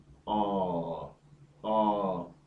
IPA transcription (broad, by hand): ᴐ: